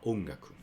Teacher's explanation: Elongate a little bit, adding a little bit n sound, a little bit nasal sound.